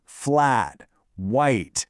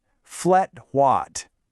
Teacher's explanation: the sound in say standard English you might really enunciate those vowels flat white right but in New Zealand those vowels just flatten out the A in flat becomes more of an S sound so it's flat and the I in white gets really short sounding more like watt let's try it flatwatt see the difference and here's the real secret It's all about having this relaxed kind of loweffort vocal posture.